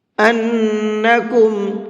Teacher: نون کے اندر غنہ کر کے پڑھیں گے، اس لیے کہ نون کے اوپر تشدید ہے